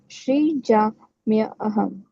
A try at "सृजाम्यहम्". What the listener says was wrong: Yes, Srijami. Sri, it's not Shri.